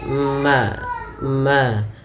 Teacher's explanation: bibir kita yaitu adanya huruf mim yang mana mim termasuk Daripada makhrajnya keluar daripada bibir kita yaitu dirapatkan